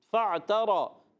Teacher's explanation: تا اور را کو کھینچنا نہیں ہے، مگر را کو پر کریں گے. کھینچیں گے نہیں مگر را پر ہو جائے گا.